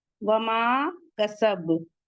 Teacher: काफ हुरूफ मुस्तफिला से है, बारीक पढ़ेंगे, सीन भी मुस्तफिला से है, और बा पे कलकले कुबरा होगा, लास्ट में इस पे सुकून आ जाएगा